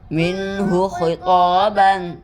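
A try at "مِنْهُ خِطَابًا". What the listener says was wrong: ناک میں آواز نہ جائے, ہاں میں. منہ خطابا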